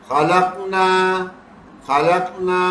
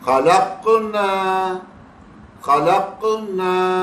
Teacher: یہ جو قلقلہ ہو رہا ہے نا، ایکو ساؤنڈ پروڈیوس کر رہا ہے، یہ پڑھنا ہی بدل دیتا ہے انسان کا.